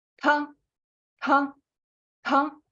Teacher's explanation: высокий тон с придыханием. Тоже та, но с придыханием.